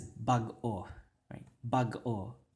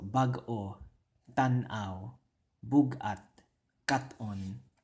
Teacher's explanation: Now notice there's a little stop, like a little pause there. It's not a glottal stop, right? Because I didn't stop my breath. I just paused internally and then continued. · Hyphenation is pretty much, if you see hyphenation in words, it's going to be an internal pause. You're going to have an internal pause when you're pronouncing the word. And it's not a glottal stop.